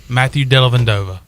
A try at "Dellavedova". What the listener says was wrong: You keep putting an N in there. There's no N. Dellavedova.